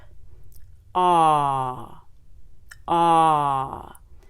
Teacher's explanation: we will bring our tongue down low and pulled back the lips will be oval in shape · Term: short back o